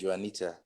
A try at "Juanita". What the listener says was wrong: for the record, my J is silent. Don't use the J.